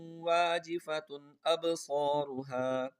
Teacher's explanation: تا دو پیش تن پہ غنہ نہیں کریں گے، حمزہ آ رہا ہے کیونکہ حمزہ حروف حلقی میں سے ہے